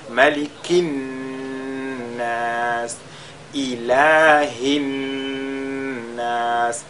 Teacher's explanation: à chaque fois on fait al-ghunna sur la lettre Nun qui est mushaddada